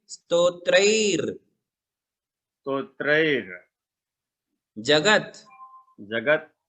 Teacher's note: उसका उच्चारण ज के पहले ही होगा, त्रयी के बाद और ज के पहले उस रेफ का उच्चारण होता है।